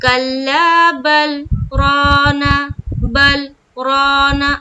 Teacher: جیسے یہاں پر بل کے بیچ میں ہے، تو ہم لوگ کیا پڑھیں گے، کلا بل رانا، بل رانا، بل اور رانا کے بیچ میں تھوڑا کچھ سیکنڈ کا رکنا ہو رہا ہے۔ تو یہ جو سکتہ ہے نا، یہاں پر سانس نہیں ٹوٹے گی، آواز تھوڑی رکے گی۔